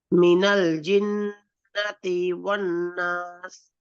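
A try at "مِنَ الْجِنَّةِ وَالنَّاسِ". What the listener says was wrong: হ্যাঁ এখানে টান হবে কারণ আলিফ আছে, ওয়ান্নাস।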